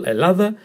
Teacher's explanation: Emphasis on the middle syllable